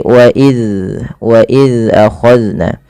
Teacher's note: Zal yaitu ujung lidahnya menempel dengan gigi seri atas. Maka dan huruf zal tidak boleh terpantulkan, tidak boleh wa iz ya.